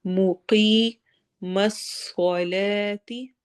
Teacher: نی یا مدہ ہوگا، اگین ٹو حرکہ لمبا کرنا ہے. موقی یا مدہ ہے، ٹو حرکہ لمبا کرنا ہے